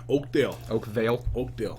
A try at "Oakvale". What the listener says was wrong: Vale with a V. Dale sounds like a bad hick farmer name.